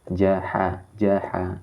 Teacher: Huruf H tengah tenggorokan. Ingat lagi, huruf H tengah tenggorokan.